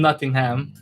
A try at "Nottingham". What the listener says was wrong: It's Nottingham. Say it like a British person. Most Americans pronounce it ham.